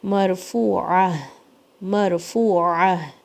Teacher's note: عین کے لیے آپ کو حلق کے درمیان سے آواز نکالنی ہے اور ہا کے لیے آپ کو نیچے جانا ہے، حلق کے سب سے نیچے سے آواز آئے گی پھر ہا کی.